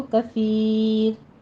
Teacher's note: را ویسے مفخم ہے ہماری، لیکن جب ہم اگر وقف کرتے ہیں یہاں پہ تو وہ باریک ہو جائے گی، کیونکہ را ساکن ما قبل یا ساکن آ رہی ہے، تو پھر ہم اس کو کثیر را باریک پڑھیں گے۔